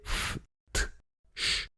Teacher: Mettez la main sur votre gorge et essayez de prononcer f, t, ch. Normalement, vous sentez pas grand-chose parce que les cordes vocales ne vibrent pas. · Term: consonnes sourdes